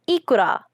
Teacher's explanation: There is an obligatory epenthetic vowel inserted between the K and the R in order to avoid a consonant cluster.